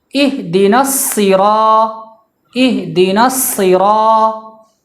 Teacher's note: اب جو الصراط میں جو حرف صاد اس کی آواز سین کی طرح ہوتی ہے مگر آواز اس کی موٹی ہوتی ہے، تو اس بات کا دھیان رکھنا ہے کہ سین کی آواز تو آئے مگر آواز موٹی ہو تاکہ سین اور صاد میں فرق واضح رہے۔